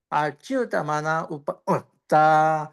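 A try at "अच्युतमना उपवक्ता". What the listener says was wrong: అచ్యుతమన ఉపవక్త దీర్ఘం ఉందండి, నా దీర్ఘం.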